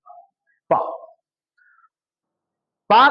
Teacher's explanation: पा पा करने कहने के लिए आपको हवा की टक्कर ओठों में देनी पड़ेगी। ओठ में हवा की टक्कर तभी लग सकती है जब ओठ बंद हो, तभी तो हवा की टक्कर लगेगी। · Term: ओष्ठ